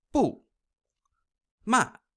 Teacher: So the fourth tone I refer to as the karate chop because you're starting high and sharply falling down, similar to giving a command like stop.